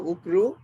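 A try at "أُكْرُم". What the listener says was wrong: উকরুম, আচ্ছা মিম থাকবে। মিমের উপর সুকুন হবে, রাইট?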